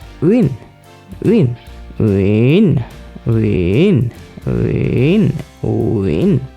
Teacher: First, lower down your voice, uin. Then raise it up very quickly, like uin, uin, uin, uin, uin, uin. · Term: tilde tone